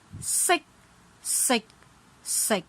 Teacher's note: tone 7, 8, and 9 are shorter because ending with K, and their tone level is corresponding to tone 1, tone 3, and tone 6